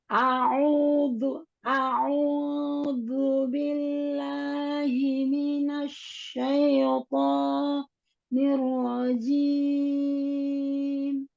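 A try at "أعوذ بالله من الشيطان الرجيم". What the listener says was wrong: Himinas. Ya, hi-nya sempurnakan hi, turunkan.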